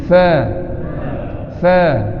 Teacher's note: Huruf fa bibir bawah dengan gigi.